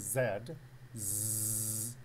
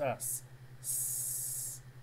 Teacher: You'll notice with the voiced sound, you'll feel vibration on the Adam's apple, but with the voiceless sound, you will not feel any vibration.